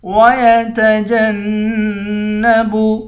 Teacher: جیم کو نون کے ساتھ ملا کر نون پر غنہ کریں گے